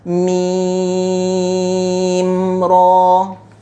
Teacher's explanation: Apabila mim mati bertemu dengan ra, hukumnya adalah izhar syafawi. Izhar syafawi tiada dengung. Tiada dengung dan dia dibaca secara jelas. Jadi dekat mim ra ni kita hanya baca dengan dia macam ni saja.